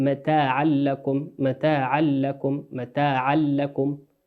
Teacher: ما نقول متاعا لكم، لا، نقول متاعا لكم متاعا لكم متاعا لكم، ندغمها من غير غنة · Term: إدغام بغير غنة